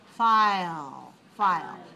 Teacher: So I'll has a little bit longer sound, but we still consider that to be one syllable, so we say 1-1.